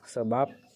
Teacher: direalisasikan sebagai bunyi b atau bunyi P apabila berposisi sebagai Koda pada sebuah silabel